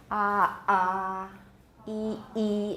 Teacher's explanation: Then do the same while making a voice sound, such as the vowel ah. Practice producing glottal stops between vowels, saying ah or e